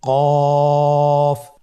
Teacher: কাফের মাখরাজ হলো জিহ্বার গোড়া থেকে একটু আগে বাড়িয়ে তার বরাবর উপরে তালির সঙ্গে লাগিয়ে উচ্চারিত হয়।